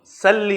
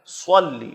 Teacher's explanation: صلی میں صاد ہے، دونوں دانتوں کے اوپر اور نیچے والے، اس کے بیچ میں زبان کو آپ نے فضا میں چھوڑنا ہے، یہ اس کا صحیح مخرج ہے. موٹا کر کے پڑھنا ہے، سین کی طرف باریک نہیں پڑھنا ہے. صلی سلی نہیں، سلی پڑھیں گے تو سین ہو جائے گا اور یہ لفظ غلط ہو جائے گا.